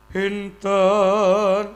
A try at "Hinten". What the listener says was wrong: kurang gedhe kurang gedhe